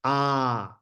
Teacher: this is a really open ah